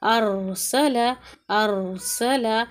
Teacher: پھر یہاں پر بھی را پر ساکن ہے لیکن اس سے پہلے دیکھیں حمزہ پر زبر آ گیا تو کیا کریں گے، اسے ملا کر بھی پڑھیں گے اور پھر را کو موٹا پڑھیں گے، ارسل، ارسل۔